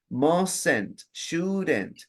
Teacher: Hay una E que se pronuncia, pero no se escribe.